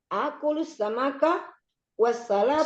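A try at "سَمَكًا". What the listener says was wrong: Samaka pendek.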